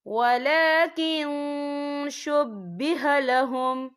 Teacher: رسول اللہ وما قتلوه وما صلبوه ولكن شبه لهم، یہ دیکھیں ولیکن، یہاں نون ساکن ہے، نون ساکن کے بعد جو ہے شین آ رہا ہے، اور شین جو ہے اکفا کا ورڈ ہے تو ہم یہاں اکفا کریں گے، نون ساکن کی آواز کو ناک میں چھپائیں گے